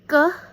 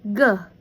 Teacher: Ke is a plosive velar voiceless and ge is a plosive velar voice.